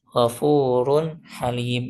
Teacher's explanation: Gfurun halim itu kalau wasal u tanwinnya bertemu sama ha maka dia diizharkan